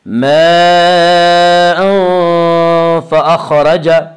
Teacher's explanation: اس کا قاعدہ یہ ہے کہ نون ساکن یا تنوین کے بعد اگر حروف حلقی، حروف یرملون اور با کے علاوہ کوئی اور حرف آئے تو وہاں پہ اخفاء حقیقی ہوگا۔ ماء فأخرج، خا کو پر پڑھیں گے، خا حروف مستعلیہ میں سے ہے